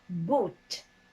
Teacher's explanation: if you cannot round your lips you cannot say boot because boot is supposed to be very high back vowel sounds